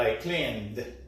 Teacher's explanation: si el verbo termina en una letra con sonido como limpiar, la N tiene voz, entonces la ED se va a pronunciar como D